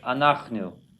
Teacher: not accented on the last syllable, second to last syllable